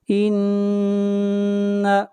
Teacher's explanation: نون کے اوپر غنہ کریں گے، نون مشدد ہے